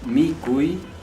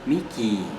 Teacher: O sea, uy se transforma en i prolongado.